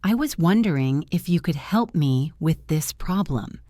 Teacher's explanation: The intonation goes up slightly at the end because it is a question even though the grammar is a statement.